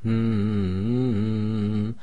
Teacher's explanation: it is a sound that is emitted from the nasal passage without any function of the tongue this is when a certain sound is held in the nasal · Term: nasalization